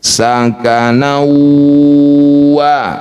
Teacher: huruf wau ini merupakan salah satu huruf asyafah, huruf bibir. Jadi kalau bibirnya tidak bergerak maka belum betul bacanya. Sakana wa mecucu dua ketukan saja.